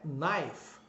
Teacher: o KN em inglês, você não pronuncia o K quando começa uma palavra. Então o brasileiro tem a tendência de falar um ki aí no meio.